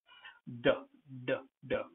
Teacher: You say duh, with a voiced sound, you produce it. It comes from your voice box. So, duh. And falls abruptly or hard with the vocal cords vibrating.